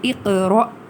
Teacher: حمزہ یعنی لاسٹ جو الف ہے وہ حمزہ ہے کیونکہ اس کے اوپر ایک جزم موجود ہے تو ہم اس کو ایک جھٹکے سے ہی ادا کریں گے